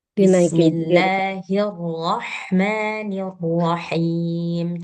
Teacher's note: Kalau ha itu di pangkal jadi dinaikin sikit.